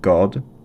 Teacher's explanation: the middle of the tongue on the roof of the mouth before the vowel, and the top of the tongue on the teeth behind the vowel, reminds me to write G or D.